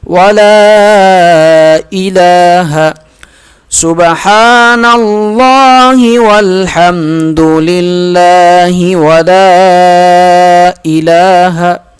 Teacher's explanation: ولا الہ لام کو تین الف کے برابر کھینچ کر پڑھیں گے